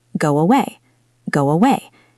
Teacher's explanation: It's not a full strong W, but a soft glide. It happens because your lips are already in a rounded shape for the word go. And as they move to the next vowel in a way, they naturally create that W bridge. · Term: W sound